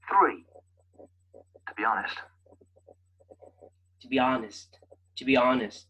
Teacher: honest is the emphasized word